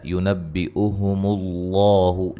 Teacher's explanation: لفظ اللہ کو خوب موٹا ادا کریں گے